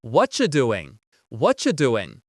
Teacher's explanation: the end of the word doing, that G also gets cut out